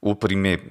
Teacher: when he says upprimebam, his O is so close, it sounds like upprimebam instead of opprimebam.